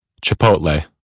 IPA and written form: tʃɪˈpoʊt.leɪ (Chipotle)